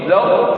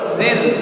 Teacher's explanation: Roh yang pertama tafkhim, zaw. Roh yang kedua tarqiq, zil. Hati-hati baca, jangan zil, zil.